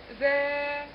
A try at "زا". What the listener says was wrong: لا هنا حرف ما طلعش مش طرف اللسان الذال هو اللي طرف اللسان ذال اللي احنا قلنا لكن ده زا زا لا زا سين